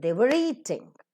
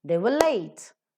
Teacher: So in eating, we pronounce the r sound, but for the first example, late, we don't, because late, it begins with a consonantal sound, but eating, it begins with a vowel sound. Before the vowel sound, r sound is pronounced. Before the consonantal sound, r sound is absent.